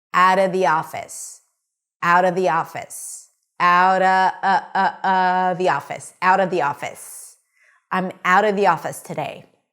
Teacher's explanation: Notice the pronunciation of 'thee', thee office, because there is a vowel there.